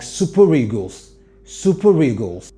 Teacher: link the r to the other vowel